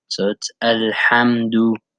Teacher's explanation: So you want to make sure that in the word Alhamdu, that the ha, you compress your throat and you push out the air from above your Adam's apple, which makes the sound.